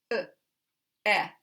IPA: ə